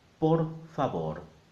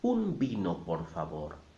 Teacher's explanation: the R in Spanish is an independent, separate phoneme. It is not just there to elongate the vowel sound.